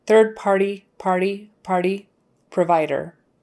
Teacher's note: the T in the middle is going to kind of go into a very soft thing, a very soft D/T kind of thing.